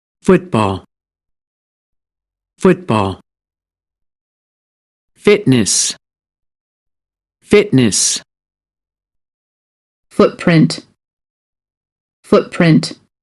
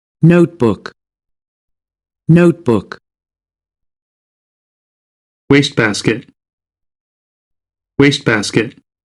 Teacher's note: Porém, dentro de uma frase onde existe a conexão do discurso, se a próxima palavra começar por uma consoante, então você não vai ouvir o som deste T final.